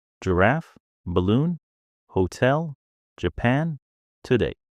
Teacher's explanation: the second syllable is the strong one.